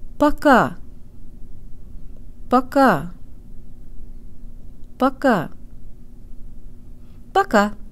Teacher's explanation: Make sure the first syllable is shorter and de-emphasized, and tell your brain that here the O sounds like a schwa sound with an ah flavor.